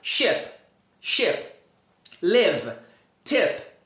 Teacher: você vai usar um som que é mais parecido com E com acento circunflexo. Ele é mais curto e também ele é mais fechado.